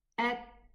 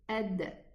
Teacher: The ta has hams and the dal has jar. So when they are sukoon, at, and the dal, ad.